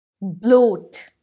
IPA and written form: bləʊt (BLOAT)